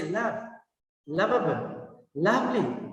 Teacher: there can be a soft touch on your lower lip by your upper teeth